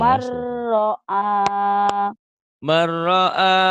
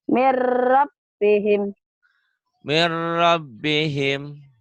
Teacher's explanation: Saat bertemu dengan ro itu dibacanya melebur tanpa dengung. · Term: idgham bila gunnah